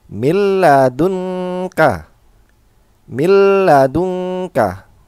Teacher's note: Di sini ada nun sukun atau tanwin bertemu dengan huruf lam, maka cara bacanya adalah milladunka, milladunka. Jadi milladunka, jangan didengungkan, tidak berdengung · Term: idgham bila gunah